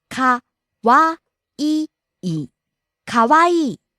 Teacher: rising on the second syllable Wa, falling on the last syllable E.